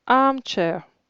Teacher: La première syllabe est accentuée. Par conséquent, la deuxième ne l'est pas.